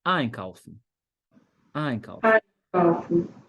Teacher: Em cima do prefixo é que fica a sílaba tônica. · E aqui é a sílaba tônica. Quando você tá usando o verbo ali sem conjugar ainda, ele no infinitivo, a sílaba tônica recai em cima do prefixo.